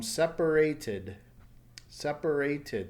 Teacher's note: Since it's a T sound, it adds an extra syllable. And the ending sound is id.